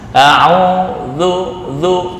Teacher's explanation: Nah, dha, zal, sa, makhrajnya sama, ujung lidah dengan ujung gigi atas. Za, a'udzu, bukan a'udzu.